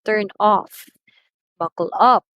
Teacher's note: the second syllable or the last syllable of the phrasal verbs are being stressed or on the particle itself · So, the stress is present on the particle.